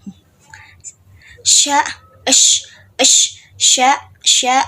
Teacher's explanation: seperti ada hambatan di daun lidah dan langit-langit keras. Itu kayak ada hambatannya itu saat mengeluarkan suara itu terhalang gitu, terhambat si bunyinya itu untuk keluar. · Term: lamino palatal